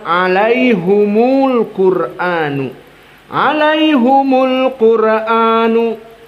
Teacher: Ini qiraah hamzah yang mana dibaca dalam keadaan dhammul ha. Maka di sini hamzah akan membaca alaihumul Qur'anu, alaihumul Qur'anu.